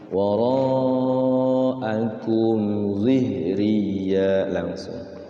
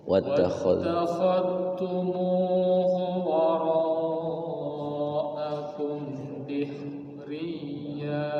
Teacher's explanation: Kumnya enggak ditahan ya, izhar syafawi. Wara'akum zihriya, langsung.